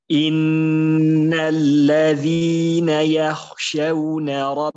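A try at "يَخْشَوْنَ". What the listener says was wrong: Masih kurang. Yakhshawna. Isti'la ya. Jadi isti'lanya tuh kurang. Antum masih kesana masih istifal itu. Yah. Jadi pangkal lidahnya tuh masih antum belum naik ke atas. Jadi kalau isti'la kan naik ya, istifah. Yakhshawna.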